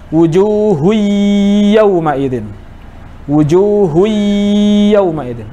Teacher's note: Itu hanya ya yang ditasdidkan terus dipanjangkan tanpa ada gunnahnya.